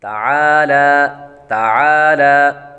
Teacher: عین کے آواز بھی نکالیں گے اور عین کو ہلکا سا لمبا بھی کریں گے، اور لام پر بھی کھڑا زبر ہے اس لیے اس کو بھی لمبا کریں گے۔